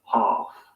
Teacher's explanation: Ah in UK English normally becomes an A sound in American English. For example, in the UK, Half.